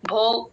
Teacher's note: భో కి మహాప్రాణం ఉంది గమనించండి